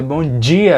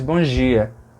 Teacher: sem o D, sem o sonzinho do D